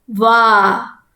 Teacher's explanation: It is not va. So waw with the fatha followed by an alif. So you have to elongate the sound wa. Then comes lam with the kasra, li.